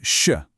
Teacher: That's a longer, softer sh sound